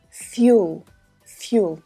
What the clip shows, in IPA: ˈfjuː.əl